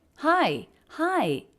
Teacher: hi has sort of an up-down shape and then a bit of a break